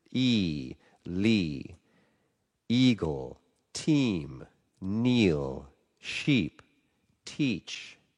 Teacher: the top vowel is made right near the hard pallet, right in that spot between the hard pallet and the front teeth.